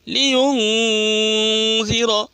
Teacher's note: نون ساکن کو ناک میں چھپا کر گنہ کے ساتھ پڑھیں گے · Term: اخفا